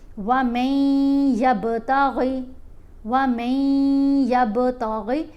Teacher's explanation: کیونکہ را حروف یرملون ہے، لیکن یہاں پر یا ہے تو یا کے اوپر ادغام بھی ہے غنہ بھی ہے